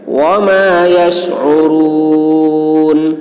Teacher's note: شین عین کو حلق سے ادا کریں گے